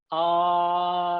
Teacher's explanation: ah is the sound from the guttural the very bottom of your throat